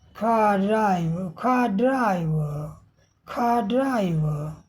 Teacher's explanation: आर नहीं बोला जाएगा। यह साइलेंट है और इसके आगे के स्वर को लंबा खींचकर आ बोला जाएगा। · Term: नॉन रोटिक